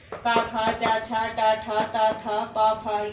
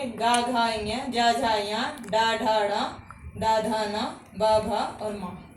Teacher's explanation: पहला दूसरा अक्षर अघोष तीसरा चौथा पांचवा अक्षर सघोष या घोष